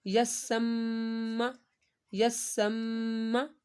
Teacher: मीम के ऊपर गुन्ना करना है।